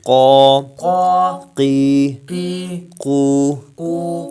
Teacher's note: قاف زبان کی جڑ تالو کے نرم حصے سے